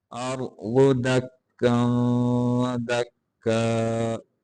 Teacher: واد کو موٹا کریں گے، را کو بھی موٹا کر کے پڑھیں گے